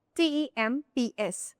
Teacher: t e m p s temps In this word, there you can only listen to temps. P and S are silent.